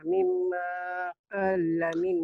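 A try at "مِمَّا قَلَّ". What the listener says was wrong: Qalla, jangan kala. Bukan, Makcik, mimanya.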